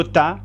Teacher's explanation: la punta de la lengua se pone detrás de los dientes superiores bien por eso esa letra se le llama dental este mismo